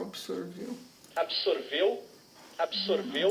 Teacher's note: Ele faz um R, um TEP.